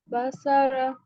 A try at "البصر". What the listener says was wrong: सौद को पुर करेंगे, पुर हुरूफ पढ़ चुके हैं ना हम, तो इसको मोटा करना है।